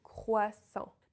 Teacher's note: it combines 3 of the most difficult sounds of the French language. The R, the OI letters, and the nasal vowel en.